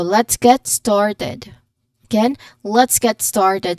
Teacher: the emphasis is on started